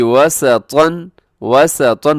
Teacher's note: वाव पे होंठ गोल होते हैं, सीन में सीटी होती है, तो हमेशा मोटा पड़ा जाता है, उसके ऊपर तनवीन है।